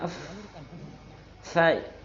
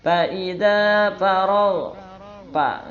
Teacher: Kalau orang Sunda nggak bisa f tapi bisanya p.